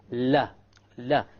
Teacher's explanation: the letter lam or la originates from the front edge and not the tip. There's a difference.